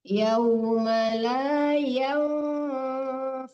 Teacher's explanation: tapi nun yang mati ya, didengungkan, disamarkan ke fa. Yauma la yanfa'u membaca yang itu ditekan ujung gigi atas ke bibir bawah, ke perut bibir ya.